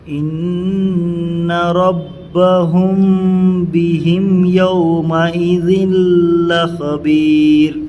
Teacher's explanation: میم ساکن کے بعد با آنے کی وجہ سے اخفا ہوگا، اخفاء شفوی بولتے ہیں